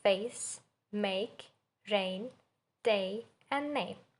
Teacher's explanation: It's the thong meaning in has two parts. It starts with e as in bet and moves slightly toward e as in sit. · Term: face vowel